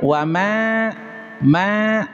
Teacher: Ah, bisa dilihat wama ma di sini ada huruf mad alif tuh. Ma ini dibaca panjang karena ada huruf mad alif. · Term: mad jaiz munfasil